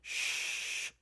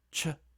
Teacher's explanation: Notice the difference between sh which is a fricative and ch which is an africate. It's a little bit more stopppy than a fricative. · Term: affricate